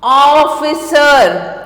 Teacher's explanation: तो यहाँ ओ का ध्वनि आपको सुनाई देती है। ऑफिसर आदि, यहाँ आ और ओ के बीच की ध्वनि निकलती है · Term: आई ध्वनि ओ